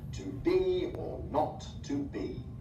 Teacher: This two-syllable foot is like a reverse trochee, so the first syllable is unstressed and the second is stressed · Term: iambic pentameter